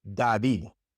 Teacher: if it's not at the beginning of the word the d in Spanish is like a th in English